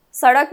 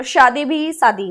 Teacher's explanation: specially UP और बिहार में सारा स स है